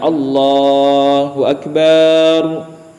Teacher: memanjangkan huruf ba pada kata akbar